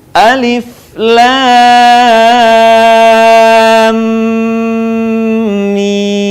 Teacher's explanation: Setelah mimnya ditahan, kemudian mimnya dipanjangkan.